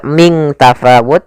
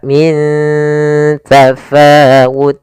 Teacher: Cara membacanya, nunnya disamarkan ke huruf ta, bukan dibaca ming tafawut, tapi dia min, ya, ikhfa-nya langsung ke ta, min tafawut.